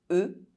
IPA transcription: ə